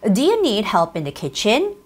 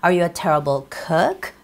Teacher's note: you have to pull it up so it would sound like questions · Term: pull up the ending